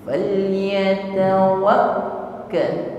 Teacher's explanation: wakka tertutup sejenak di situ, ya, sehingga bunyi suara kaf tertahan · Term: syiddah